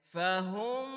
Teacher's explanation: میم کے اوپر شد ہے تو ناک سے آواز نکالنی ہے